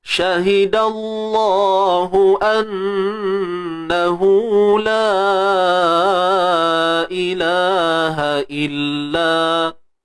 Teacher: Annahu la pula kita panjangkan 4 atau 5 harakat. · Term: mat jaiz munfasil